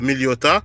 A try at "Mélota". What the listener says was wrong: C'est Mélota, c'est pas Méliota. C'est Mélota.